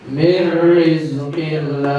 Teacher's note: Karena ada nun sukun bertemu dengan huruf ra. Maka dibaca idgham bila guna.